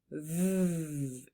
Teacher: gently place your lower lip against your upper teeth V then turn on your voice so you'll feel your throat buzzing and let the Sound flow smoothly like a little buzz sound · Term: buzzing V sound